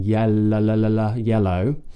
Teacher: a light L is a L sound, like in yellow, where we flick the tongue from the top of the mouth to the bottom of the mouth